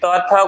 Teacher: त थ को कहते हैं त वर्ग। इसका उच्चारण हुआ आपका दांत से।